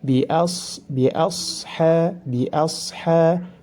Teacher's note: ha dipanjangkan dua harakat karena dihukumi mad tabi'i